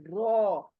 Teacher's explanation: ना उनको लगे उनको लगेगा लगने से अदा होगा रो यानी आपकी जुबान है ना किनारे से दांतों के मसूड़ों को लगेगी साइड से साइड से और यह मोटा लेटर अदा होगा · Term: मोटा र